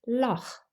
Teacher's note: It is a velar fricative formed at the back of your throat